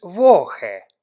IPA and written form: ˈvɔxə (Woche)